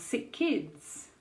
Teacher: So rule two, if you have two words with the first word ending in a consonant similar to the next first consonant in the next word, for example, sick, kids, sick ends in k and kids starts with k, you only need to pronounce the k sound once